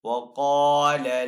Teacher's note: وقال لهم، قاف یہاں پہ حروف مستعلیہ میں سے تو قاف کو یہاں پہ پر پڑھیں گے۔ الف سے پہلے قاف کے اوپر یہاں پہ زبر ہے تو یہاں پہ الف مدہ ہے، تو حروف مدہ کو ایک الف دو حرکات کے برابر کھینچ کر ادا کرتے ہیں، تو یہاں پہ قاف کو تھوڑا سا کھینچ کر ادا کریں گے۔